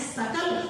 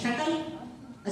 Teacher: सबसे पहले वर्णोच्चारण की शिक्षा कि श कहां से बोलना है, स कहां से बोलना है, इसमें मूर्धन्य श है, इसमें दंत्य स है, इसमें तालव्य श है